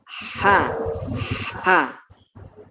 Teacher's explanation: Ha, makhrajnya di tengah-tengah tenggorokan. Kemudian ada desisnya.